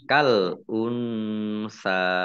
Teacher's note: Kal unsa ini al unsa alif lamnya alif lam komariah ditandai lamnya dibaca sukun. Nun sukun bertemu dengan huruf sa bacaan ikhfa dibaca samar-samar. Sa fathah berdiri mat tobi'i panjang 2 harokat.